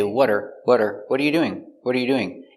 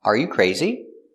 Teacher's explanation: when using are, it's usually reduced in a sentence.